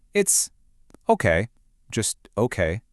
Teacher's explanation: Now, this one is my personal favorite, the fall rise tone. Your voice dips down and then it comes back up just a little bit.